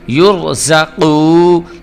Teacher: یہ قاف جو ہے یہ حروف قلقلہ میں سے ہے، اس کی آواز کو ہم پر کر کے پڑھیں گے، موٹا کر کے پڑھیں گے۔